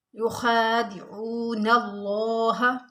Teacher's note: लफ्ज़ अल्लाह को हमने मोटा करके पढ़ना है क्योंकि इससे पहले ज़बर है